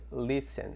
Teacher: Perceba então que o listen, o T não é pronunciado.